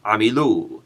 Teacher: the accent falls on the last syllable in this case